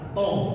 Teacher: Makhraj to dan ta itu di ujung lidah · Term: toful lisan